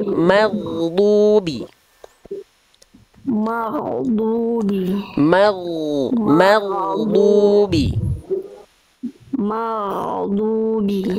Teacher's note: huruf ghain dilafalkan dari ujung tenggorokan